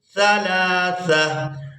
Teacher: تو وقف کی صورت میں اس ایک آنکھ والی تا کو ہا میں بدلیں گے اور ساکن ادا کریں گے. سا کو اس ہا ساکن کے ساتھ ملائیں گے.